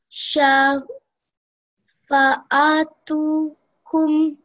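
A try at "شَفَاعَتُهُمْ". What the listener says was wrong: So just in this word over here, again it's one word, so we don't want to break it up too much. Shafa'atuhum.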